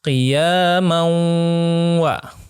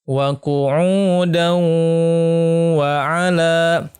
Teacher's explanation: Nah, untuk idgham bi gunnah ini bacanya ditahan selama 2 harokah.